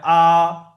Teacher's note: মুখের একদম খালি অংশ থেকে আওয়াজটা বেরিয়ে আসে